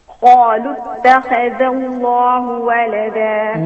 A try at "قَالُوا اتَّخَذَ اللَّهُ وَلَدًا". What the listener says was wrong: Now we need to work on the kha. قالوا التا muraqqaqa, kha mufakhama, then ذا. قالوا اتخذ.